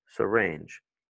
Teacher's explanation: Et tu vois que l'accent, c'est sur la deuxième.